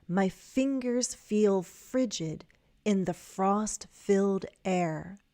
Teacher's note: Again, longer prepositional phrases tend to have tend to form their own thought group. So, we're going to break just before the preposition in.